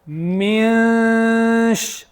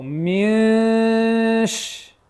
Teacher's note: I'm forcing my tongue down. It's not going to go up. It wants to go up because of the noon, but the noon here is hidden. It's a hidden noon.